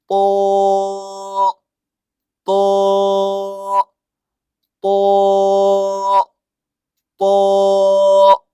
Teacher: وہ کیسے موٹا ہوگا سنیے آپ، جیسے کہ تو، تو مطلب زبان کی نوک اور آگے کے دانتوں کی جڑ، اوپر والے جو دانت ہیں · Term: طا